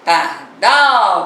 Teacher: Pardal, você já sabe que demorou mais um pouquinho no dal. Dal é a sílaba, é a última sílaba. É a sílaba tônica da palavra pardal. Se eu fosse classificá-la, seria oxítona, não é mesmo?